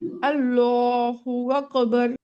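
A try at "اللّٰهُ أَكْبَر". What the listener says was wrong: আচ্ছা আপু ঠিক আছে মাশাল্লাহ।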